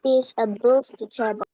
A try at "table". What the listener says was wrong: Table. Ada dikit bunyi i-nya.